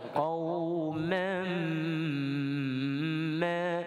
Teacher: Qauman ma, dekat mam itu kita dengung 2 harakat. Baik, kemudian ma kita baca dengan 5 harakat.